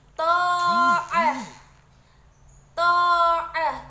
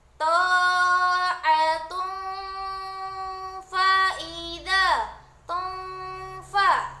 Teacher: Jika berhenti, maka ta marbuthah dibaca dengan seperti huruf H. Dan jika diteruskan, maka cara membacanya ta'atun fa'idha tunfa.